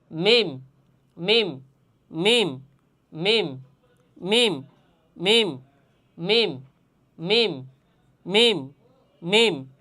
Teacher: মিম হরফের উচ্চারণের স্থান হচ্ছে দুই ঠোট · আমরা বার ক্ষেত্রে কি বলছিলাম, মাখরাজের ক্ষেত্রে, যে দুই ঠোঁট থেকে বা উচ্চারণ হয়, কিন্তু কি বলছিলাম যে ভিজা অংশ থেকে বা, বা ভিজা অংশ থেকে বা উচ্চারণ হবে, কিন্তু মিমও দুই ঠোঁট থেকে উচ্চারণ হবে, কিন্তু শুকনো অংশ থেকে উচ্চারিত হবে।